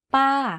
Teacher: We need to go up first in order to be able to fall. To say this tone, focus on pitching your voice to go slightly up first and then to fall down at the end of the syllable. · You can hear from my voice that my pitch went up and then down very slightly. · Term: falling tone